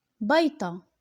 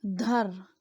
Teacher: La dernière caractéristique, c'est le dévoisement. La consonne occlusive apicodontale sonore orale et emphatique D se réalise en T sourde dans le parlé jbli.